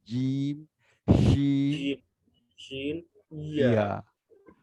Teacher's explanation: তালুতে যেমন জিম শিন ইয়া ই এই আগেই আমাদের দেখা যাবে জিম বলার আগে জিহ্বার মাঝখানটা উপরে তালুতে লেগে যায়